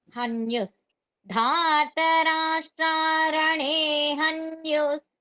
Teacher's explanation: విసర్గతో పాటు మనం స ని పలుకుతున్నాం